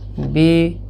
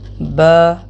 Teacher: اس کی نیچے کی طرف آواز ہوتی ہے زیر کی، زبر کی اوپر کی طرف آواز ہوتی ہے۔ زیر کی مقدار: زیر کو تقریباً آدھا سیکنڈ ایک حرکت کی مقدار کے برابر کھینچ کر پڑھنا ہے۔